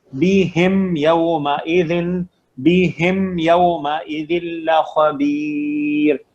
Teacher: میم ساکن کو اپنے مخرج, اپنے آرٹیکولیشن پوائنٹ سے شو کرنا, کلیئرٹی, بالکل کلیریفائی کرنا میم کو, نو غنہ, نو غنہ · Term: اظہار